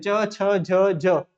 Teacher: स्पर्श संघर्षी व्यंजन अर्थात वे व्यंजन जिनके उच्चारण में जो जो है जब मुख से उच्चारित होते हैं वे स्पर्श के साथ-साथ थोड़ा संघर्ष अपने उच्चारण में होता है।